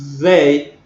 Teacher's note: Si yo digo they, simplemente con el fonema dental oclusivo, significa día. En cambio, si yo digo they con el fonema más interdental fricativo, estoy diciendo ellos